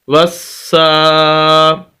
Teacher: سین کے اوپر شد ہے اور شد والا لفظ اس کو 2 مرتبہ پڑھا جاتا ہے